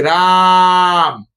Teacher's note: দূর থেকে কাউকে ডাকছি রাম, এই যে এটা লম্বা ভাবে টানছি, প্রলম্বিত করছে স্বরটাকে, তাই এটা প্লুত স্বর